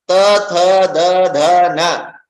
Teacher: So if your teeth don't come together, there is no way you can pronounce ta. Only when your tongue is stopped by your teeth can you correctly pronounce ta.